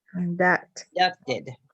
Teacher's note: you put the accent on the last syllable